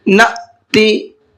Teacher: حمزہ ساکنہ ہے اور حمزہ ساکنہ کے پڑھنے میں جھٹکا ہوتا ہے